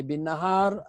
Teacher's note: Ha alif di atas mad asli ketika wakaf jadi mad arid disukun. Ra baris bawah ketika wakaf jadi sukun sebelumnya beratas, hukum ra tu tafkhim tebal